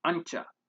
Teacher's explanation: this is produced by raising your tongue to your hard palate allowing air to pass through your nose and making noise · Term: post alveolar nasal consonant